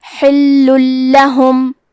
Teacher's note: ادغام کا معنی ہے حرف کو حرف میں داخل کرنا تو ہم تنوین کو لام میں ملا کے بغیر غنہ سے لیکن تشدید کے ساتھ یہ حکم کو ادا کریں گے